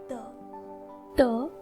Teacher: हमारी जो जीवा पूर्ण रूप से दंत स्थान यानी कि हमारे आगे के दोनों दांतों को स्पर्श करनी चाहिए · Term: स्पृष्ट प्रयत्न